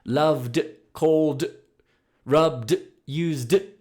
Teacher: the D ending, which is a little bit similar to T, but a little bit softer. So it's sort of like you're saying the word dog. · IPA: /d/